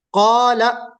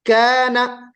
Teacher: काफ के बाद अलिफ है इसको हम पुर पढ़ रहे हैं क्यों पुर पढ़ रहे हैं क्योंकि अलिफ से पहले जो हर्फ